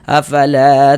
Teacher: Sehingganya huruf yang memiliki tanda baca fathahnya dibaca panjang. Sehingga la dibaca panjang. Mad thobi'i panjang dua harakat.